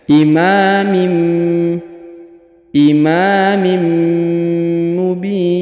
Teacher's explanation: huruf tanwin in bertemu dengan huruf mim bertasdid, maka ditahan dan ditekan serta didengungkan ya. Huruf tanwin mim dileburkan ke huruf mim yang bertasdid ya.